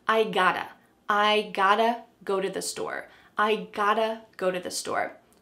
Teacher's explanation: Now, just to let you know, sometimes in American English, when there is a present perfect verb tense, like I have got to do something with the word have, sometimes we drop have completely, especially with got to. We might just say, I gotta go to the store.